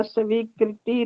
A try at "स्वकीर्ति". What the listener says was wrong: स्वकीर्ति रक्षा, कृति नहीं, स्वकीर्ति रक्षा करणीया।